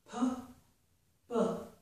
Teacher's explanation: They're both made by closing my lips and then opening my lips. The voicing is different, and that makes the difference in the sound.